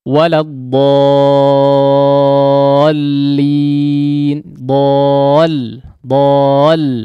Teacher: meninggikan suaranya sedikit ketika masuk kepada huruf yang bertasydid nya atau perpindahan antara hurufnya dari huruf mati kepada huruf berikutnya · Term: hentakan